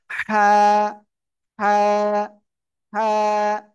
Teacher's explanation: অক্ষরটা কোন জায়গা থেকে উচ্চার হবে গলার মধ্যখান থেকে বা হলক হলক মানে গলা গলার মধ্যখান থেকে অক্ষরটা উচ্চারণ হবে